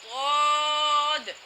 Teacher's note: زبان کی کروٹ جب اوپر کی داروں سے بائیں طرف بھی لگے اور دائیں طرف بھی لگے، دونوں طرف سے ملانے سے ضاد ادا ہوگا۔ ضاد، یہ بھی موٹی آواز میں پڑھا جائے گا، منہ کو بھر کر ادا کیا جائے گا۔